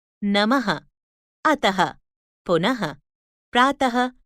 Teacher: आहा इसे विसर्ग कहते हैं इसको ह की तरह बोला जाता है